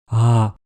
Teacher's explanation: La voix soufflée ou murmure, ça consiste à laisser passer plus d'air par les cordes vocales, ça donne l'impression de soupirer en même temps qu'on prononce la voyelle.